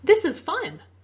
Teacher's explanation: My voice went up and my tone is a little higher, right?